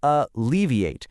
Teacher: It has four syllables and the stress is right there on the second syllable.